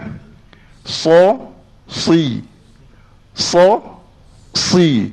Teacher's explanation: ketika kita kata si tu dia ada sekali dengan pangkal lidah maksudnya pangkal lidah kita ni terangkat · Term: pangkal lidah terangkat